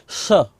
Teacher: दूसरा स होता है यह बोला जाता है मूर्धा से